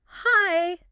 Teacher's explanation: A flat hi can sound bored, but a little lift, hi, sounds welcoming, curious. The sound has to match the intention. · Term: Intonation